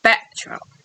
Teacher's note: The T is also glottalized before another consonant.